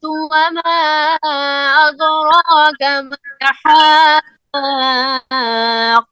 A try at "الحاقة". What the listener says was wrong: جو درمیان والا آپ نے پڑھا نا وہ قاف آپ کا صحیح نہیں پڑھا گیا. ملحاقۃ، قاف کے اوپر شد ہے، اس کو مخرج میں دبا کر نکالنا ہے. پھر پڑھیے الحاق. نہیں، نو نو نو نو، الحاقۃ، قاف کے اوپر پریشر آئے. اعلیٰ نہیں، اعلیٰ نہیں، الحا، اعلیٰ نہیں، یہ غلط ہوتا ہے. اعلیٰ مالا یہ غلط ہوتا ہے. الحا، لام میں آواز بند ہو.